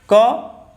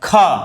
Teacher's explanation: तो ख के साथ हा साइलेंट रूप से जुड़ा रहता है, तो इन्हें महाप्राण कहते हैं